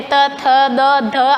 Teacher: दंत्य यानी दांतों पर जब जीभ टच करके बोलते हैं